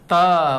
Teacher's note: दंत के बगल में जाएगा जीभ जो है त, वहां हवा रोक के त निकलेगा